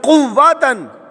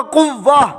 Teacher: اور گول تا کو وقف میں ہاں کر دیں گے۔